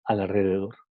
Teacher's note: Aquí tenemos el sonido R que viene después de un sonido L Y a pesar de que está escrito con una R normal, no con una doble R, se pronuncia como una R múltiple